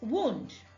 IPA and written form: wu:nd (wound)